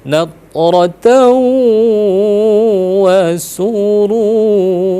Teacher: ketika rotau wa itu pasti sengau dia masuk ke hidung. Itu bentuk sempurna dalam idgham bi gunnah antara fathatain bertemu dengan waw.